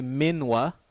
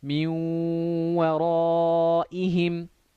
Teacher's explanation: You'd say min waraihim. You hold it for 2 beats and you do idgham. You join the noon to the waw.